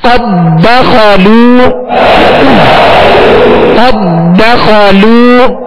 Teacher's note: قد داخلوا نہیں پڑھیں گے, دال کو دال میں مکمل داخل کریں گے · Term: ادغام مثلین تام